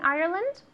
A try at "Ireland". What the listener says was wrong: Ireland. Yeah, the D at the end, okay?